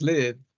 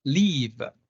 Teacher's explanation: Lax is live, and tense is leave